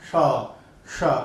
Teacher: इसका उच्चारण करने के लिए जीवा को थोड़ा अंदर ही रखा जाता है, शा, शा। जब इसका उच्चारण करते हैं तो जीवा को मसूड़े के पास लाया जाता है, शा, शा। इसमें थोड़ा घर्षण ज्यादा दिखाई देगा।